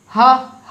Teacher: उच्चारण में कोई तकलीफ नहीं होती कंठ से बिना रुकावट के निकल जाती है · हां बोलने पर बिल्कुल डाइरैक्टली ऐसा लग रहा है कि अंदर से हवा बाहर जा रही है